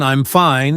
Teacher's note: For example, if I say I'm fine in a happy tone, it sounds like everything is okay. But if I say it in a flat or sad tone, I'm fine, it can mean the opposite.